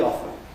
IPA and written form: ˋɒfn̩ (often)